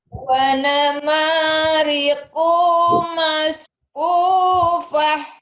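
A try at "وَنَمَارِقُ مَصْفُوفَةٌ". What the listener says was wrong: Kenapa kunya panjang? Kunya pendek.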